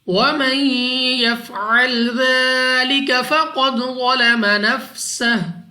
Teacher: نون ساکن کے بعد یا حروف یرملون میں سے ہے، ادغام کا قاعدہ ہے، غنہ کر کے پڑھیں گے۔ · لال کو نرمی سے ادا کرنا ہے، کھڑا زبر کی وجہ سے 2 سیکنڈ تک لمبا بھی کیا جائے گا۔ قاف مستعلیہ میں سے ہے، پر یعنی موٹا پڑھیں گے، منہ اور آواز کو کھول کر۔ دال پر قلقلہ کرنا ہے، یعنی جب ہم ادا کریں گے تو ہمیں اپنی آواز واپس لوٹتی ہوئی سنائی دے گی۔